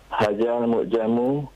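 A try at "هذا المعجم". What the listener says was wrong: Hadzal mu'jamu. Zalnya lebih perhalus lagi pengucapan zal. Hadza. Hadza.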